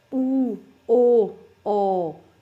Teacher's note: ਉਸ ਤੋਂ ਬਾਅਦ ਹੈ ਪਿਛਲੇ ਸਵਰ, ਜਿਹੜੀਆਂ ਸਵਰ ਧੁਨੀਆਂ ਨੂੰ ਉਚਾਰਨ ਦੇ ਸਮੇਂ ਜੀਵ ਦੀ ਜਿਹੜੀ ਕਿ ਆਪਣੇ ਜੀਵ ਦਾ ਪਿਛਲਾ ਹਿੱਸਾ ਕਾਰਜ ਕਰਦਾ, ਭਾਵ ਕਿ ਪਿਛਲੇ ਪਾਸੇ ਜੀਵ ਦੀ ਜੜ ਕੋਲੋਂ ਧੁਨੀਆਂ ਉਚਾਰੀਆਂ ਜਾਂਦੀਆਂ ਨੇ, ਠੀਕ ਹੈ, ਪਿਛਲਾ ਹਿੱਸਾ ਕਾਰਜ ਕਰਦਾ, ਉਹਨੂੰ ਪਿਛਲੇ ਸਵਰ ਕਹਿੰਦੇ ਨੇ।